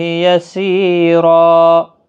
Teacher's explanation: 2 زبر کو بدل کر ایک زبر کے ساتھ وقف کریں گے، الف مدہ بنے گا، ایک الف کی مقدار کے برابر کھینچ کر وقف کریں گے